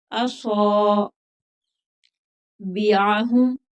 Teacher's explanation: عین حروف حلقی ہے، حلق سے نکلے گا